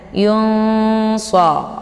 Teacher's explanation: Jadi ikhfa al-shad ini dibaca dengung dan samar, ya. Jadi tingkat dengungan dan kesamaran itu seimbang. Jadi tidak lebih ke dengung, juga tidak lebih ke samar. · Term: ikhfa short